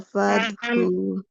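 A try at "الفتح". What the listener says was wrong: Tak sukunnya. Keluarkan dulu hamasnya. Nafasnya keluarin baru ke ha. Fathu. Al-fathu.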